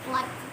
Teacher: We let air stream on the sides of our tongue. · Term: liquid